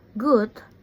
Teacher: ge is a voice velar plosive both sounds are made by rising the back of the tongue towards the so palette.